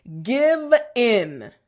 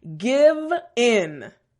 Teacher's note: V sound, front teeth, bottom lip, and a little bit of vibration.